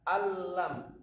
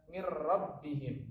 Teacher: ini adalah tanpa dengung. Maksudnya adalah cara membacanya tidak perlu ditahan lama-lama. Tidak seperti tadi, seperti idgham bil gunnah tadi, dia perlu ditahan. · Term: idgham bila gunnah